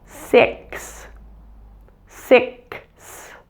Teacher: the X is actually made up of two different sounds it's a K and an S put together